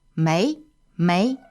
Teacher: m e i second tone